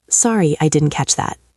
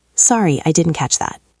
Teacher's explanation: It is not a question. It is a statement. Downward intonation at the end.